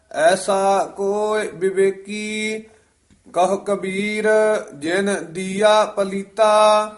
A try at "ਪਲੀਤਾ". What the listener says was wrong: ਹਾਂ, ਪਲੀਤਾ ਹੀ ਉਚਾਰਨ ਕਰਨਾ ਹੈ, ਤੱਤਾ ਨਹੀਂ ਪਹਿਲਾਂ ਲਾ ਦੇਣਾ।